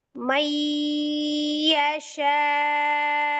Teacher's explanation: ketika diwakafkan hamzah yang disukunkan ini, maka cara bacanya adalah dengan cara dinaber atau ditinggikan.